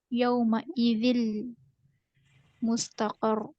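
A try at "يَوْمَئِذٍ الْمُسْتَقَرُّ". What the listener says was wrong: नहीं, इसमें लाम मुतहरिक रहेगा इदगाम में। ये लाम सुकून है ना, और यहाँ पे ना ऐसे नहीं पढ़ा जाएगा। यहाँ पे नून कसरा ऐड करके पढ़ेगा। इसको बोलेंगे इल्तिक़ाए साकिनीन, इला रब्बिका यौमइज़िनिल मुस्तक़र।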